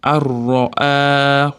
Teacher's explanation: Ya'ni g'unnasiz idg'om qoidasi kelyapti. Nunni ro'ni ichiga kirgizib yuboramiz.